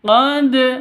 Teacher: qqal sugro bukan di belakang Tapi di depan atau di tengah qqolah sugro harus dipantulkan ke huruf qqolahnya